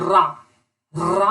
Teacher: व्यंजन जिसके उच्चारण में जिह्वा 2-3 बार कंपन करता है, रा कंपित कर रही है, इसीलिए इसे हम लोग प्रकंपित व्यंजन कहते हैं या प्रकंपित व्यंजन कहलाती है।